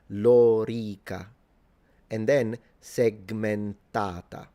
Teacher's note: But for those of you who are interested in Latin and the precise phmic vowel length, th this vowel, the o and the e are both long